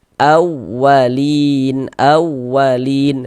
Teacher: huruf wau bertasydid itu kita tekan, kita naikkan intonasinya. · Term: nabr